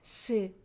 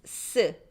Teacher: The regular one is soft. 스. Double one is tense.